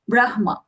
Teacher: Brahma, Hakara first, Makara later.